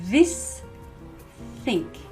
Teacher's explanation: for both of them the tip of your tongue is between your teeth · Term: th sound